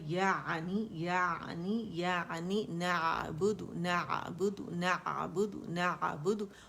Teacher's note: عین کا تعین کرنا ضروری ہے تاکہ عین کھینچے وہ حمزہ نہ بنے